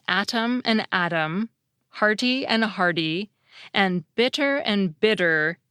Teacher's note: That’s what turns pairs of words such as “atom” and “Adam,” “hearty” and “hardy,” and “bitter” and “bidder” into homophones. In all of these examples, the alveolar flap comes at the end of a stressed syllable, and the beginning of an unstressed one.